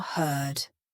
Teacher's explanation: this is the colored R and it's really typical in American English